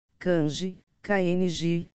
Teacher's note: A consoante nasal N pode formar por si só uma mora, sem contribuição de vogais.